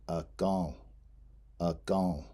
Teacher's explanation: It has a nasal in right before the L at the end of the word. So that in is nasalized, so it's pronounced akan.